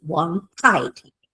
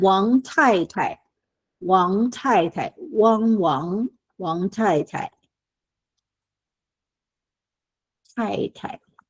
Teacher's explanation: it's an aspirated T